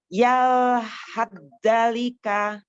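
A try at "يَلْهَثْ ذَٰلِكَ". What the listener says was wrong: Sa-nya jangan dibaca tapi langsung ke zal. Yal hadzalika. Alifkan dulu zalnya. Yal hadzalika. Zanya matobi'i. Yal hadzalika. Huruf dalnya jangan terlalu diapit ya, jangan terlalu di makhrajnya. Jadi tipis saja. Yal hadzalika. Alifkan. yang berharokat ya.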